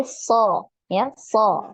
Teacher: huruf sod, jangan sho ya, tapi so ya, so. Nah, lebih cenderung ke huruf sin